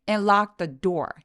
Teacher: t 소리와 또 th 소리가 혀의 위치가 같기 때문에 거의 가깝기 때문에 그냥 한 번만 소리내는 거죠